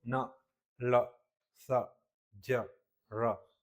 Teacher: जहां जीभ का अगला हिस्सा ऊपरी दांत को स्पर्श करेगा या दांत के पीछे भागों से स्पर्श करेगा, उसे बोलेंगे हम लोग वर्ष ध्वनिया। अब इसको होता क्या है मुंह के अंदर ऊपरी दांतों के ठीक पीछे का मसूड़ा उभरा हुआ आता है, इसे ही क्या बोलते हैं हम लोग वर्ष कटक कहते हैं, एलोवर रिड।